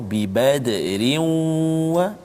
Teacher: Tanwin bertemu dengan waw, bi badrin wa idgham ma'al ghunnah, dengung 2 harakat